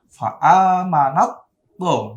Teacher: Nah, langsung masuk ke to, taknya hilang.